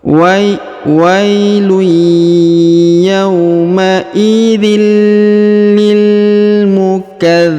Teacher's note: huruf tanwin in bertemu dengan lam bertasdid maka tanwin innya menghilang melebur ke huruf lam bertasdid